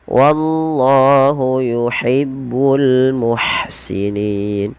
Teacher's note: Pada lafal wallah wanya tipis, Allahnya tebal, maka disamakan dengan lam tafkhim.